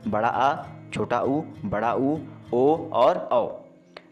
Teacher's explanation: स्वरों का उच्चारण जीभ के पिछले भाग से होता है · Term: पश्च स्वर